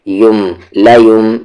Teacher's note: मीम में क्यों मिला रहे हैं, क्योंकि नून साकिन के बाद बा है, तो नून की आवाज़ को मीम में क़ल्ब कर दे रहे हैं, यानी चेंज कर दे रहे हैं।